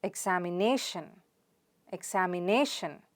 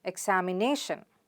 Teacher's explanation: It's na. So the stress is on the na sound.